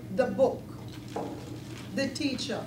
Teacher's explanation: There's also the absence of the TH sound, which I mentioned before. So everything now has a D sound. And so the becomes D, okay?